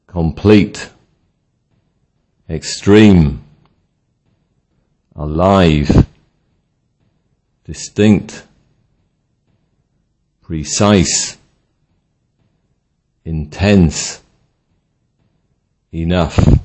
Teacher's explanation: Adjectives with stress on the second syllable